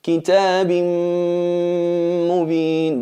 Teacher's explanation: En el caso de la mim, kitabin mubin. ¿Veis que fusionamos la nun en la mim, manteniendo la gunna y eliminando el cuerpo de la letra